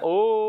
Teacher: प्लुत स्वर में यानी 3 गुना समय लगे